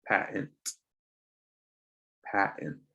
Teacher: This T will be weirdly silent or there will be sort of an empty zone